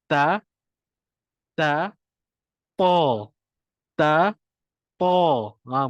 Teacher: kita sebut huruf ta tapi kita naikkan lidah belakang